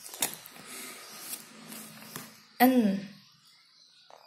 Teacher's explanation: Voice. Place of articulation alveolar and manner of articulation nasal.